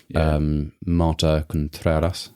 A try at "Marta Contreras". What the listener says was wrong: Contreras, yeah. Bit more R.